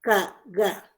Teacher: más posterior, por la parte postdorso de la lengua